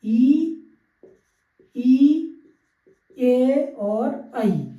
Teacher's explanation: अग्र मीन्स जिनको बोलने में शॉर्ट टाइम लगता है, जीभ के अगले भाग से जिनको बोला जाता है। ऐसे स्वर जिनको जिह्वा, जीभ के अगले भाग से बोला जाता है उन्हें अग्र स्वर कहते हैं